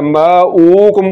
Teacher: تو پیش کو لمبا نہیں کرنا ماوکم پڑھنا ہے